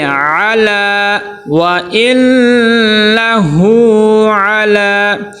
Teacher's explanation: آگے عین، عین کو صحیح طرح ادا کرنا ہے، حمزہ نہیں بنانا، اعلیٰ نہیں، اعلیٰ۔ لام کے اوپر کھڑا زبر ہے، ایک الف کے برابر لام کو کیا کریں گے؟ لمبا کریں گے